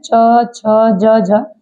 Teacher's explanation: उच्चारित होगा और च वर्ग जो है च छ ज झ ये आपका तालू से उच्चारित होगा